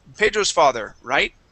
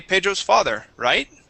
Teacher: you hear how the voice Scoops at the end